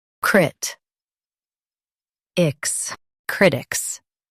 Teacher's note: Stress crit and keep ics soft.